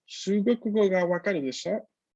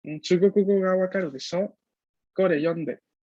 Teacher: el de sho con esa entonación ascendente